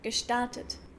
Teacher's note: GE is sometimes pronounced as K, gestartet.